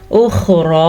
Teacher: اخرا خا کے تلفظ کا خاص خیال رکھنا ہے کیونکہ خا ہمیشہ پر پڑھا جاتا ہے, اور را کو بھی پر پڑھیں گے کیونکہ را کے اوپر کھڑی زبر ہے, اور یا لکھنے میں ہے پڑھنے میں نہیں کیونکہ یا کے اوپر کوئی بھی حرکت نہیں ہے.